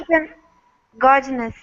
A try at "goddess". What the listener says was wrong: Goddess. Yeah, no N. So it should be like that. Goddess.